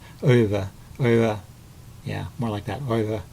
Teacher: the W is pronounced in a sound sort of halfway in between a W and a V, so sort of a soft V sound, and the EU is pronounced like the German O umlaut, so there's a bit more of a O sound in there that I'm really capturing, so it's something like Euwe, Euwe, yeah, more like that, Euwe.